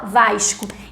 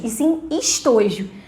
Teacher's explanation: nós cariocas niteroienses fazemos o chiado · a gente tende a fazer chiado em toda vez que é sibilante, que é o que a gente chama de S, se encontra aqui em posição de coda, que é o que a gente chama final de sílaba. · o S, em posição final de coda, assume chiado dentro da fala de niteroenses e cariocas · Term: chiado carioca